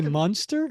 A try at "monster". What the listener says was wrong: You say Munster, yes. Yeah, but you say Munster. It's like Herman Munster and the Munsters.